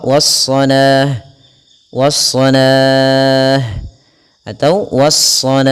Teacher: kita boleh memanjangkan la-nya 2 harakat atau 4 harakat ataupun 6 harakat.